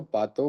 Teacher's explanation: तो प्रातः में जो आधा र था हलंत र उसका लोप हुआ है। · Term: र का लोप